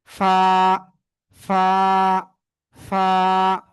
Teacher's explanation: নিচের ঠোঁটের পেট, উপরে দুই দাঁতের আগায় লাগাবো, লাগিয়ে হালকা বাতাস বের করে এক আলিফটা নিয়ে উচ্চারণ করব, ঠিক আছে?